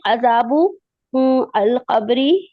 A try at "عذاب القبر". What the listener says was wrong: دیکھیے یہاں پہ بھی آپ پڑھنے میں غلطی کر رہی ہیں، عذاب نہیں ہے، وہ عذابل ہے، با کو لام سے ملائیں گے